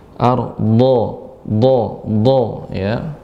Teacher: Dha dengan tepi lidah